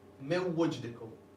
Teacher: As you pronounce that Wav, you would hear that sort of nasally sound in the nasal cavity. Important bit is drop the Noon, don't pronounce the Noon, and you join the Mim to the Wav. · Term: Idgham with Ghunna